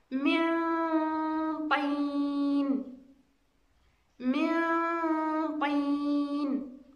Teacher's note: من طين، إذن عندنا نون ساكنة بعدها حرف طاء، إذن طاء من حروف الإخفاء وأيضا من الحروف المستعلية، من خص ضغط قيظ. إذا الغنة ستكون أيضا مستعلية تبعا للحرف المستعلي وهو حرف الطاء. إذا لا نستعمل اللسان في الغنة ولا نشدد حرف الطاء. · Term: الغنة مستعلية